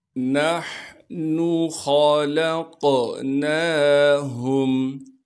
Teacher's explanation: نون کو ہا سے ملانا ہے اس لیے کہ ہا ساکن ہے، اس نون کو بغیر کھینچے پڑھیں گے۔ خا کو موٹا کر کے پڑھنا ہے کیونکہ خا موٹے حروف میں سے ہے۔